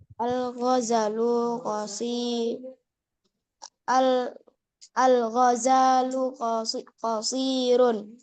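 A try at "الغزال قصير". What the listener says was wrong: Al-ghazalu. Zanya panjang. Al-ghazalu qasirun.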